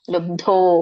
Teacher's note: ಮಹಾಪ್ರಾಣ ಗಮನಿಸಿ, ಲುಬ್ಧೋ ಬಕ್ಕೆ ಮಹಾಪ್ರಾಣದ ಧ ಒತ್ತಿದೆ.